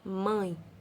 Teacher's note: Quase que a gente não ouve o E. Então, temos a vogal A, mais a semivogal E.